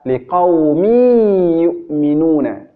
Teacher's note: Tanwinnya tidak terlihat ketika diucapkan. Itu maksudnya dimasukkan tanwinnya ke huruf setelahnya. Ya, atau dileburkan ke huruf setelahnya. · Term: idgham